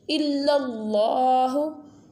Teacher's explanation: Lam will be bold because standing fatha is on the lam, so boldly.